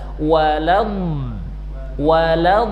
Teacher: sisi lidah hafatul lisan naik ke langit-langit ya ke gigi geraham atas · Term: al-istitalah